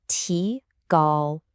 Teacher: The first character, tí, is a rising second tone.